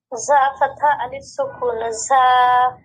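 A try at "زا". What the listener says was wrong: জা জা, এটা অতিরিক্ত স্ট্রেস দেওয়ারও প্রয়োজন নাই, যতটুকু আছে ততটুকুই যথেষ্ট। মানে জিহ্বার অগ্রভাগ এটা সামনের নিচের দাঁতের মধ্যভাগে লাগবে এবং দুই দাঁত বন্ধ থাকবে, আর দুই দাঁতের মধ্য জায়গা থেকে, ফাঁকা জায়গা থেকে জায়ের সাউন্ডটা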